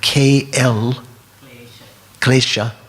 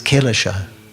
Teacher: in Sanskrit you have KL, klesha, but in Pali it's Kilesha. So that you don't have 2 different consonants together in Pali.